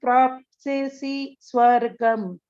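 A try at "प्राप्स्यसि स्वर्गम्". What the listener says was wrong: Prapsyasi swargam. One stressing will be there. Hato va prapsyasi swargam. Correct only, but only thing is there will be dvitvam here.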